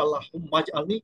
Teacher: আর যখন মিলে পড়বে আল্লাহুম্মাজ আলনি, এই আলিফটার উচ্চারণ হবে না।